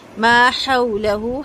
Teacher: پھر حمزہ کو تحقیق سے پڑھیں گے، ضاءت، ضاد کو بہت اچھا سا پر کر کے 4 حرکت لمبا کریں گے، مد واجب ہے، تا کا ہم واضح کریں گے۔ ما حولہ، ہا کی آواز حلق کے اندر سے آئے گی ہوا کے ساتھ